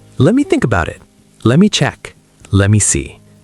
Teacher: Let me becomes lemmy.